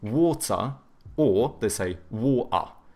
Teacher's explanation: the British, they tend to have either hard T's or they do like the glottal T, so but then they do a schwa instead of pronouncing the R, so they say water or they say water.